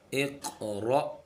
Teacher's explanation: रा और हमज़ा पर हमने झटका देकर पढ़ना है। रा को मोटा पढ़ेंगे, हमज़ा पर हम झटका देंगे। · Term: क़ाफ कलकला